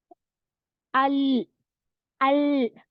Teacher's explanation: गम जो दाढ है उसकी गमन भी वो स्प्रेड हो जाती टंग गम्स के पास भी लग जाती दांतों के और ऊपर की और सख्त पैलेट पर भी टच होती · हार्ड पैलेट जो है माउथ के अंदर ऊपर वहां पर हम टिप ऑफ द टंग को रखकर यह लाम पड़ेंगे